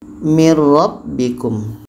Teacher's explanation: Bunyi nun masuk ke ro dan tidak boleh dengung. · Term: idgham bila gunnah